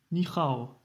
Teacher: c'est pas le H aspiré comme en anglais, hein. Le H se prononce comme R, comme dans riz.